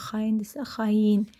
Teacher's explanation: söz tərkibində y samitini bitişdirici y samitini əlavə eləyirik ora tələffüz zamanı y ilə məsələn xaindirsə xayin kimi tələffüz olunur.